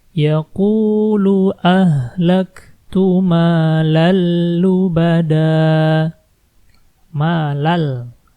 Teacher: Malal, ada fathatain ketemu la di sini, masukin langsung ke la-nya.